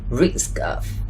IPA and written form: rɪsk-əv (risk-of)